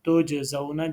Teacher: تجزون جیم کے اوپر قلقلہ ہے